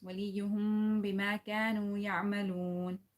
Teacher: After that there is ba, you have to do ikhfa here. وليهم, you have to take the sound of the meme into the nose